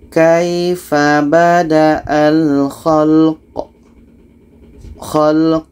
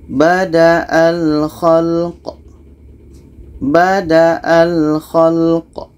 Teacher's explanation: Qa mati ini hukumnya qalqalah, ada pantulan.